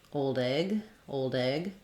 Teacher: I might link and the D is released and comes out together with that on that egg sound